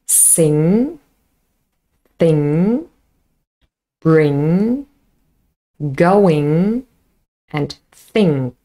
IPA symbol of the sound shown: ŋ